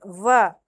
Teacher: ऊपर के जो दांत होते हैं ना ऊपरले दांत तो निचला होठ दोनों को मिलाकर के हम व का उच्चारण करते हैं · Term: दंतोष्